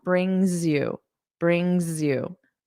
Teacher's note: this s we can link it brings you. So it will sound like a voiced sound.